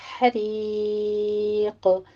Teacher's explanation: عذاب الحریق میں ہا وسط حلق سے اور را باریک پڑھتے ہوئے یا مدہ، پھر اینڈ پر ہم نے قوف کو ساکن کرنا ہے، تو یہاں پہ قلقلہ ہوگا، حریق۔ مد عارض وقفی کر لیں گے، یہاں پہ ہم نے 6 کاؤنٹ کرنا ہے۔